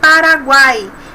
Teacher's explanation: nós temos numa sílaba apenas três sons vocálicos porém um é um é semivogal ou é semivogal a vogal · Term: tritongo